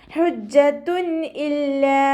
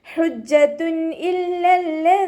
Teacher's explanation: വമ്മ തൻവീൻ ആണ് വന്നിട്ടുള്ളത് തൻവീനിന ശേഷം ഇഹാറിന്റെ ലെറ്റർ ആയിട്ടുള്ള ഹംസ വന്നിട്ടുണ്ട് തൻവീനിലുള്ള നൂനിന്റെ സൗണ്ടിനെ വ്യക്തമാക്കി മണിക്കാതെ ഉച്ചരിക്കുട്ടോ